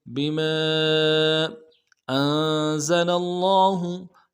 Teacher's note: حمزہ کو نون ساکن کے ساتھ ملانا ہے، نون ساکن مغنہ کریں گے